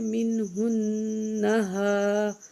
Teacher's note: نون میں تھوڑا غنہ کریں گے، جب نون پہ شد ہوتی ہے تو غنہ کر کے پڑھتے ہیں